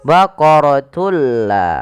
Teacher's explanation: Idgham bila gunah yaitu idgham memasukkan bila gunah tanpa disertai dengan gunah. Yang dimaksudkan di sini adalah memasukkan suara tanwin pada lafal baqaratun ke huruf la. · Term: idgham bila ghunah, idgham bila gunnah